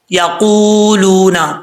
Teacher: کو پڑھتے وقت ہونٹ گول کریں گے، واؤ زبر وا، یقولون، قاف حروف مستعلیہ میں سے اپر پڑھا جائے گا